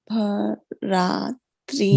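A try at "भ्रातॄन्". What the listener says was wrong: Bhra, not bhara. Bhra. You see, look at the Hindi again, right? This is bha and bhra, right?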